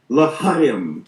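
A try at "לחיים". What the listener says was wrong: And if you get it in the back of the throat a little more, you'll be there. L'chaim.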